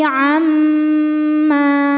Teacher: mim hukumnya ghunah musyaddadah karena mim bertasydid. Cara bacanya berdengung. Tahan dengungannya kurang lebih dua harakat. Amma ma mad thobi'i zohiri. · Tahan dengungannya kurang lebih dua harakat. Amma ma mad thobi'i zohiri. Sebab ada alif sebelumnya baris fathah. Cara bacanya panjang dua harakat.